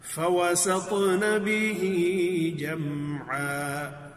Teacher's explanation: جمعا بعض لوگ جو ہے نا جمع میم پر قلقلہ پڑھ دیتے ہیں، تو یہاں جیم پر قلقلہ نہیں ہے. جیم کو بڑی خوبصورتی سے اس پر اظہار کریں گے. جو ہم نے میم ساکن کے جو قاعدے پڑھے ہیں ان میں میم ساکن کے بعد نہ ہی تو کوئی ایسا حرف ہو جو ادغام کرنا ہے اور نہ ہی کوئی ایسا حرف ہو کہ جس میں اخفا کرنا ہے.